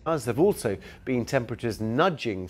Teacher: so there have becomes vev which links to the following word also